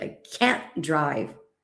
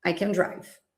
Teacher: in the affirmative form we have a weak form of can with a very short sound of the vowel and also the stress.